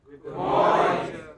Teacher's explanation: The first syllable in the word morning which is stressed